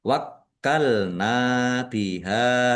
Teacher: Wa faqod wakkalna. Kafnya ada ada tasdidnya dibaca dobel ditekan.